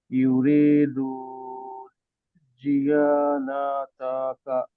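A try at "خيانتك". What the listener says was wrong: না এটা জিয়া না, এটা কি? খিয়া, কিয়া, ইয়াতে টান হবে, আলিফ আছে। খিয়া নাকা, নাতাকা।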